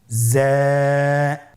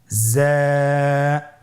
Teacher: যা উচ্চারণ করার সময় অবশ্যই এক আলিফ টেনে পড়তে হবে।